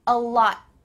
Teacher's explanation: that final T is stopped. Your tongue is at the top of your mouth. You're going to make that T sound, but you don't. · Your tongue is at the top of your mouth. You're going to make that T sound, but you don't. Instead, it just gets cut short. Your tongue stops at the top of your mouth.